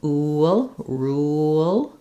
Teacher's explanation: For rule, there's no movement on the vowel. The only movement happens with the L sound there. · there is some gliding as I move from the oo to the ul. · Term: dark L